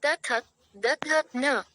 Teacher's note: दंत्य dental ध्वनियाँ जो दांतों से उच्चारित होती हैं